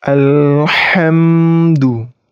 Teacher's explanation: Huruf ha itu keluarannya di pangkal tenggorokan sedikit disempitkan.